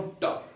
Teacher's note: मैं जैसे ट बोलूं ट, तो मेरा जीभ ऊपर से ऊपर मुड़ा, ऊपर भाग को टच किया। ट बोलूंगा तो जीभ ऐसे मुड़ेगा, ऊपर वाले भाग को टच करेगा, तो उसी को बोलते हैं मूर्धा।